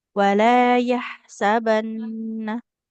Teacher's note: hati-hati kayak nun bertasdid pastikan ditahan.